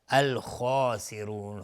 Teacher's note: هم الخاسرون الف لام قمری است، الخاسرون، خا از حروف استعلا غلیظ تلفظ میشه، الف هم تابع خا غلیظ تلفظ میشه، الخاسرون، را حکمش استعلا چون ضمه داره، الخاسرون مد عارض للسکون به مقدار 2 یا 4 یا 6 حرکت میتونیم مد بدیم.